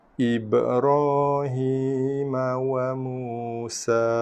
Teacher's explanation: Okey, ra berbaris atas fathah dibaca dengan tafkhim tebal.